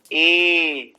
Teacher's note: ऐसे ही ए, जिह्वा वही कार्य कर रही है जो ई में कर रही है। बिल्कुल जिह्वा का जो मध्य भाग है वो बीच में से थोड़ा सा मुड़ करके और तालु की ओर जाने का यत्न कर रहा है, टच नहीं कर रहा तालु को, लेकिन प्रक्रिया बिल्कुल वो की वही है, बस हवा में है, थोड़ा आकाश में है ये।